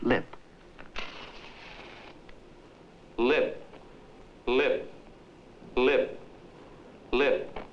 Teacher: there is hardly a flicker in the P sound in the word lip